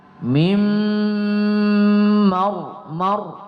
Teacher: Jadi agak kita tebalkan pada ra sukunnya. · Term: tafkhim